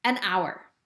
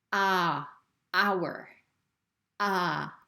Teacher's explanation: letter but notice the sound that this word makes ah ah it's not the h that we hear it's the ah from the o that we hear so this is also a vowel sound right from this letter